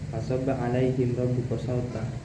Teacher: Nah, huruf lin karena di sini ada huruf ya yang dan waw yang disukun oleh huruf sebelumnya yang berharakat fathah itu. Nah, huruf ro-nya di sini harus dibaca tafkhim atau tebal